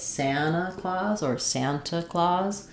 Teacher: The main stress is going to be on the san, so it's Santa Claus or Santa Claus